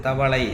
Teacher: கடைசில ஈற்றெழுத்து தவளை, ஐ வந்திருக்கு பாருங்க, அந்த லை என்பது இரண்டு மாத்திரையில இருந்து ஒரு மாத்திரையாக ஆகுது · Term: ஐகார குறுக்கம்